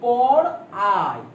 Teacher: তার মানে এই যে আই বলছি, এই আইটা কিন্তু আমরা দুই বর্ণ দুই স্বরধ্বনি মিলে কিন্তু উচ্চারণ করছি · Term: যৌগিক স্বরধ্বনি